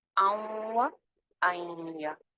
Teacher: نون کی کوئی تھوڑی سی ادھوری سی آواز باقی رہ جاتی ہے، یعنی غنہ کر کے اس کو ملاتے ہیں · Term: ناقص ادغام